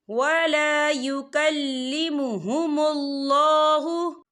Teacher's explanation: اللہ کا نام پر پڑھا جائے گا کیونکہ اللہ کے نام سے پہلے پیش ہے۔